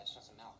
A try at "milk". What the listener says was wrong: Now you're saying it wrong. You're saying MALkK, like it's a disease. I'm saying it the way everyone ought to say it. MILK, M-I-L-K. Say milkshake. Okay, now say milk. MALkK?